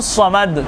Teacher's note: अल्लाहु समद, स्वाद इस्तेमाल हुआ है समद में, स्वाद का मखरज दोनों दांत ऊपर के और नीचे के इनके दरमियान में ज़बान को लेकर छोड़ देना है, स्वाद मोटा होगा।